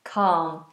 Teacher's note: l in calm is silent